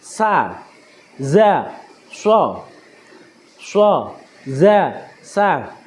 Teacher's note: Bunyi huruf sin, za, shod keluar dari ujung lidah yang hampir bertemu dengan gigi depan bagian bawah